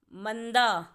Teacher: म के बाद आ रही है न की आवाज